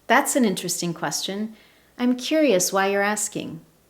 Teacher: I'm maintaining a higher tone of voice and I'm using rising intonation